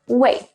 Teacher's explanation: But some people, especially men, like to say it with the fourth falling tone, 喂. To make it sound more polite, I recommend putting 你好 after 喂 when answering the phone.